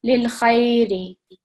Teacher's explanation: kha with the fatha is joining with the ya with the sukoon, so 2 seconds